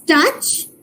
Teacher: The touch ends with an affricate, which is ch